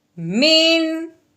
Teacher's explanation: اب جب ہم نے غور کیا ہے کہ عین حروف ہلکی میں سے حرف آتا ہے تو نون ساکن کے بعد اگر حروف ہلکی میں سے کوئی حرف آ جائے تو پھر نون ساکن پہ غنہ نہیں کرتے، بغیر غنے کے اظہار کے ساتھ پڑھتے ہیں